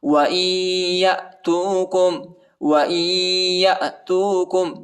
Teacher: نون نہیں پڑھا جاتا کیونکہ یا پر شد آیا ہے، اور ادھر غنہ بھی کریں گے